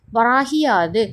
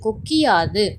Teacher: முதல் எழுத்தின் இறுதியில் உள்ள கு என்னும் எழுத்து கி என்று ஒலிக்கிறது. அதுவும் முழுமையாக ஒரு மாத்திரை அளவில் ஒலிக்காமல் அரை மாத்திரை அளவாக குறைந்து ஒலிக்கிறது. இவ்வாறு தன் ஒரு மாத்திரை அளவில் குறுகி ஒலிக்கும் இகரம் குற்றியல் லிகரம் எனப்படும்.